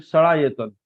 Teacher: सळायतन मधला ळ जो आहे हा सेमी ओहल आहे, म्हणजेच त्या अंतस्थ व्यंजन आहे.